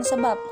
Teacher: pada posisi akhir, sebagai koda, posisinya mendua, maksudnya dapat sebagai fonem B dan dapat pula sebagai fonem P. Di sini fonem B itu hilang kontrasnya dengan fonem P. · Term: arkifonem